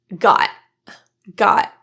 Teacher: Another pronunciation you might hear is a glottal T for the T in got.